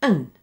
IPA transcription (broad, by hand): ən